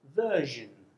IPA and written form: vɜ:ʃən (version)